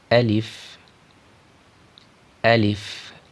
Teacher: نکلنے کی جگہ ہے، وہ منہ کا خالی حصہ ہے، یعنی منہ کے خالی حصے سے الف کو ادا کریں گے ، نہ ہی حلق سے ادا کریں گے، نہ ہی ناک